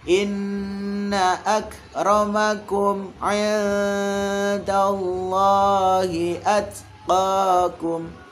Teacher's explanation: Inna, ini innya agak ditahan ya. Inna agak lama ya, dipanjangin dikit.